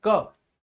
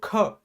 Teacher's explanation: का को बोलने में तो कम वायु बाहर आ रही है, खा को बोलने में सर थोड़ी सी ज्यादा वायु बाहर आ रही है